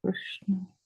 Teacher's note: the vowel R, then your lips will be neutral. It is not widened. It is not rounded.